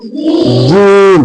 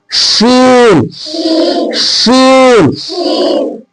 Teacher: जीम बोलो, शीन या गैर मद्दा, यानी जो या मद्दा नहीं है उसका जो क्या होगा मखरज, जबान का बीच, है ना, और ऊपर के तालू उसमें लगा देना है। जबान के बीच को कहां लगाना है, ऊपर के तालू में चिपका देना है।